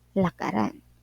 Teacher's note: ang d ay nagiging R lakad plus an Instead na ladan nagiging lakaran ang h ay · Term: pagpapalit ng ponema